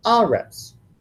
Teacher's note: And sometimes when the accent goes onto that first syllable, it's going to be aretz.